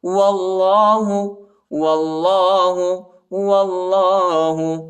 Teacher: واللہ، وہ کو لام کے ساتھ ملائیں گے، الف نہیں پڑھا جاتا، الف کے اوپر حرکت نہیں ہے، اور اللہ کے نام کو موٹا پڑھیں گے، پر پڑھیں گے